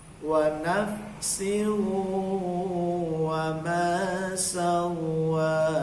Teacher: Wa nafsin, wawunya agak lama idgham biguna